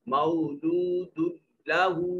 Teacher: मौलूदुल्लहू, दाल के ऊपर तनवीन है और उसके बाद हुरूफ यरमलून में से लाम है, इदगाम बगैर गुन्ना के होगा। इस दाल को लाम के साथ मिलाएंगे मगर आवाज नाक से ना निकले।